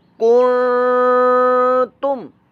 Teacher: جو آگے حرف ہے جی تا یعنی کہ حروف اخفا میں سے، لہذا یہاں نون کی آواز کو چھپا کر اخفا کریں گے، ہم غنہ کر کے پڑھیں گے